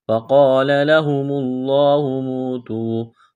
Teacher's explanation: واو ساکن سے پہلے پیش ہے تو ایک الف کے برابر اس کو کھینچنا ہے